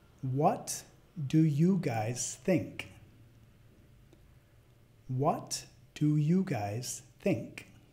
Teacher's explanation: What do you guys think What do you Presta atención a al sonido subiendo no que señala que es una pregunta